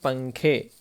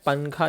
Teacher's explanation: نون کی آواز کو ناک میں چھپا کر پڑھنا چاہیے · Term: اخفا